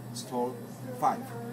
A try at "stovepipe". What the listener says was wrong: No, not five. Pipe. Stove pipe.